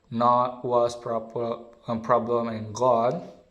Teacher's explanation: the last the open back vowel, as in the word not, was, problem